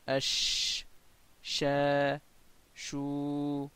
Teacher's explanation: la seule différence c'est que l'espace entre la langue et le palais dur reste ouvert